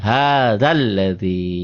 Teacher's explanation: Karena ketemu alif lam, ketemu huruf bertasdid, alif lam samsiah, maka jadi pendek.